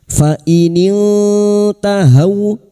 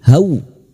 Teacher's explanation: fathah bertemu wawu sukun kita lunakkan huruf lin